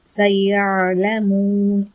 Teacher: இந்த ஐனை ஓதும் போது நிதானமா ஓதணும். நம்மளுடைய தொண்டைக்குள்ள கொஞ்ச நேரம் அந்த ஐனை பிடிச்சி வச்சுக்கிட்டு ரிலீஸ் பண்ணணும்